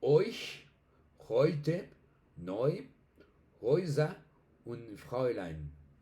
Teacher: Pilas que tenemos acá, digamos que uno de los más significativos, por decirlo así, o representativos de la lengua alemana, que es la E con la U o la A umlaut con la U, que suena hoy, hoy, como una O y una I en español. Tenemos palabras como euch, heute, neu, Häuser und Fräulein. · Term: diptongo